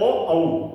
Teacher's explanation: ये हमारे कंठ और ओठों की सहायता से बोले जाते हैं। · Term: कंठोष्ठ वर्ण